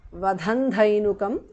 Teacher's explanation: Vadhan dhainukam because of sandhi. Anuswara changes to nu there.